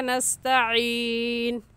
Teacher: आइन हलक के दरमियानी हिस्से से निकलता है